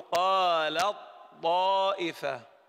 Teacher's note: أنا لا أنطق التاء، أبدأ بالطاء مباشرة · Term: إدغام متجانسين صغير